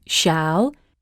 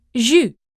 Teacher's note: These were basically English's sh sound, but the tongue rounded up towards the roof of your mouth and your lips flatter and open